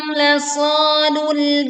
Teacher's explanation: Kemudian lul, tekan alif lam di sini, hati-hati tidak memantul.